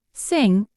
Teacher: the word sing is also a nasal sound in this case the back of the tongue is raised towards the soft pallet creating a closure at the back of the mouth the air is then directed through the nasal cavity producing the